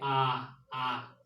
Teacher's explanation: तो विवृत स्वर आ होता है और इसमें इसका उच्चारण करेंगे तो मुख जो है पूरा खुल जाएगा